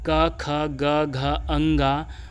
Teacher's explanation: क वर्ग का 5 वर्ण दोस्तों जिसका उच्चारण स्थान होगा कंठ।